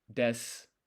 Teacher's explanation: And as a whole, when you listen to Japanese, you know how sentences, they end in like mas, like arimasu, or des, for example, is another one. When you write it, it's actually desu, arimasu, but the u is silent.